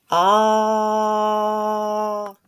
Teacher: повітря вільно виходе із ротика не заважає йому виходити зубки губки а язичок лежить спокійно на дні ротика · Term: звука а, звука А